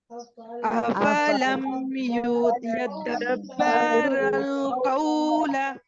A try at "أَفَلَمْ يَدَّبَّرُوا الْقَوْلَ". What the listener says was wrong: देखिए यहाँ पर दो तशदीद आ रही हैं, एक के बाद एक। दोनों को आपने पढ़ना है, स्किप नहीं करना है।